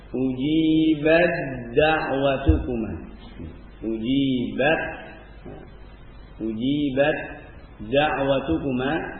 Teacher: maka ta diidghamkan kepada dalnya. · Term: ta sukun bertemu dengan dal